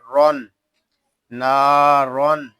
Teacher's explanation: رو دو زبر رون، نارون، یہاں را کو ہم پر پڑھیں گے کیونکہ را کے اوپر دو زبر کی تنوین آ رہی ہے۔ آگے جو الف ہے یہ زائد ہے، اس الف کو ہم نہیں پڑھیں گے، نارون ایسے پڑھیں گے۔